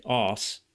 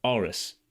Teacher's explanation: So, Aris sounds a lot like arse, doesn't it? But, it's rhotic because it's two syllables. So, it has the r at the beginning of the the second syllable.